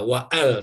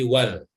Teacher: Jadi kalau ada huruf sebelumnya dilangsungkan, ya, tidak wa'al tapi wal